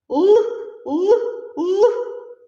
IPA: л